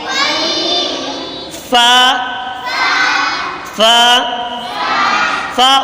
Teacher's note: فا فا فا اوپر کے دانتوں کے کنارے اور نیچے کے ہونٹ کی تری والے حصے سے ادا ہوتا ہے، اوپر کے دانتوں کے کنارے اور نیچے کے ہونٹ کے تری والے حصے سے ادا ہوتا ہے۔